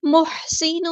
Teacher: سین کی سیٹی ہم نے واضح کرنی ہے. نون کے اوپر یہاں پہ تنوین آئی ہے, تنوین کی آواز کو ہم چھپا دیں گے.